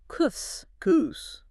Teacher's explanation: you start with the hard boundary, the K at the back of the throat, and force the continuous breath, the S, against it.